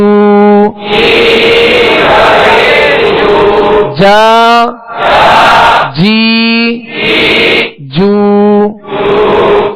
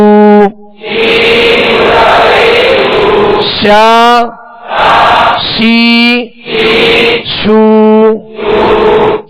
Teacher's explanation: کا بیچ اور تالو کا بیچ، اوپر والے تالو کا بیچ، یعنی درمیانے زبان درمیانے تالو سے جیم شین یا یہ تینوں حروف ادا ہوتے ہیں۔